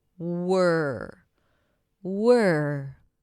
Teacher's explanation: So you transition from the W to the R directly.